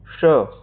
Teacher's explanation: तो इस ध्वनि का उच्चारण स्थान है मूर्धा। मूर्धा श एक मूर्धन्य उष्म व्यंजन है